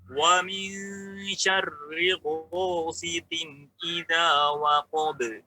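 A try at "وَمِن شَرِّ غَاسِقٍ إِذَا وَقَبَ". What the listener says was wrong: Getarannya masih kurang terdengar, Pak ya.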